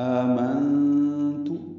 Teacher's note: حمزہ اکٹھے ہوئے ہیں، مد بدل بنی ہے، آ کھڑا زبر، نون ساکن پہ اخفا ہے کیونکہ آگے تا آ رہا ہے